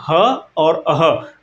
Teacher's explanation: ह कहाँ से बोला जाता है? तो कंठ से बोला जाता है। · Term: काकल्य व्यंजन